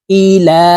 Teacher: পেশ হইলে ওই হরফটি এক আলিফটা নিয়ে পড়িতে হয় এই কারণে লামের উপরে খারা জবর থাকার কারণে এই লামকে এক আলিফ টেনে পড়তে হবে